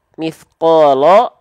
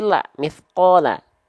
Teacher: harakat fathah ketika kita lafalkan dengan vokal a keluarnya maka itu huruf tipis